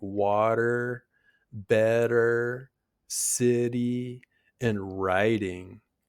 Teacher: In American English, the t often sounds like a soft d sound. You'll hear this in words like water, better, city, and writing. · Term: flap t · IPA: /ɾ/